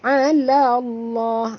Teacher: lam pada lafaz jalalah dibaca tebal kerana lam yang sebelumnya itu adalah berbaris di atas